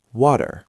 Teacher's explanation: It is not a hard D like dog. It is a very light tap of the tongue on the roof of the mouth. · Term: flap T